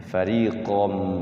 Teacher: Jadi huruf qaf itu dia fathahnya pakai o ya.